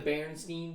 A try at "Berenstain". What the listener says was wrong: yeah, but it's Berenstain. It's Berenstain, not Berenstein, but we call it Berenstein.